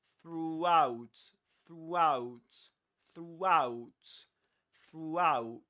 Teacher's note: to go from there to out, you end up pronouncing a W sound. You say throughout.